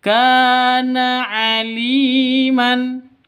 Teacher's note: Li panjang 2 ketukan karena ada ya mati diawali dengan kasroh. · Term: mad tabi'i